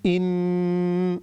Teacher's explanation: یہاں پر غنہ ہو رہا ہے، 3 سیکنڈ آپ سے ناک سے آواز نکالنی ہے